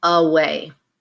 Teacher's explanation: notice the first sound is uh uh but we use the letter A so that's your schwa